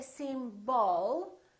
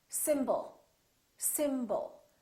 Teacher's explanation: The first syllable is stressed, and the second syllable is reduced. When we have a reduced vowel, we don't pronounce it fully.